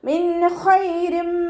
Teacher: നൂൻ സാക്കിനയ്ക്ക് ശേഷം ഇബ്ഹാറിൻ്റെ ലെറ്റർ ആയിട്ടുള്ള ഹ വന്നിട്ടുണ്ട്. നൂൻ സാക്കിനയെ വ്യക്തമാക്കി മണിക്കാതെ ഉച്ചരിക്കുക. മിൻ ഖൈരി എന്ന് ഉച്ചരിക്കരുത്.